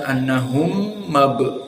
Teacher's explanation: Di sini idgham mim. Mim sakinah iltaqa ma'a mim al-fathah.